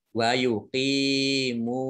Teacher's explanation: shotnya dibaca double, ada tasdidnya